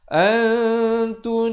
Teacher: Samarkan di antara bunyi nun dan bunyi ta. Nak kata bunyi nun pun tidak, nak kata ta pun tidak.